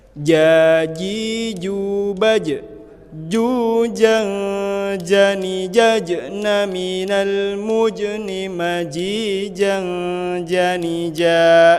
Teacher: Ja masuk ke jahar. Tidak keluar angin. Ja, bukan za, tapi ja.